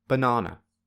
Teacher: The second syllable is the loudest, the highest, and the longest, whereas the first and third syllables are equally quiet, low, and short. Therefore, this word has two syllables with zero stress and one syllable with primary stress.